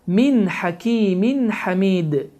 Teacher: Fikir verdiyiniz kimi sukunlu nundan sonra hə hərfi gəldi və sonra hakimin sözünün sonunda tənvin kəsrə gəldi və tənvin kəsrədən sonra isə hə hərfi gəldi və bu zaman izhar qaydası baş verir ki, burada n səsi açıq-aşkar şəkildə oxunmalıdır